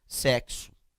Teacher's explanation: o meu X, ele vai formar, ó, 2 fonemas. Ele vai formar o K e o S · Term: X com som de KS